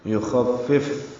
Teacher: فا کو پھر فا سے ملائیں گے، اس دوسرے فا ساکن پہ ہمس ہوگا. یخفف ہمس کا مطلب سانس جاری رہنا.